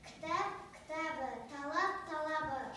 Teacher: П дыбысына аяқталған сөзден кейін дауысты дыбыс қосылса, П дыбысы Б-ға айналып кетеді.